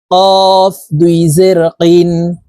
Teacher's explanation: কফ হরফ জিহ্বার গোড়া তার বরাবর উপরের তালুর সঙ্গে লাগাইয়া উচ্চারণ করব